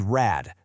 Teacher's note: Because that D in rad is at the very end of the word. It sounds like a T. So even though they're spelled differently, they are pronounced exactly the same.